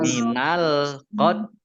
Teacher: Tak sukun ya, tak sukun itu keluar S sedikit ya